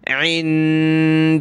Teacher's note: अल्लाह से पहले दाल पर ज़बर है तो मोटा करेंगे और नून साकिन पर हमने नाक में आवाज़ पैदा करनी है